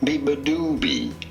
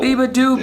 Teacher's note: You do want to stress on the third syllable.